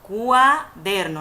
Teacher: cuaderno es importante recordar que el dictongo no se separa porque cuando se unifican estas vocales cuando nosotros la pronunciamos nos vamos a dar cuenta que estas suenan unidas · cuando nosotros pronunciamos la U con la A, es como que estas están una pegada de la otra, como melliza, cuaderno, no digo cuaderno, sino cuaderno. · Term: ditongo, diptongo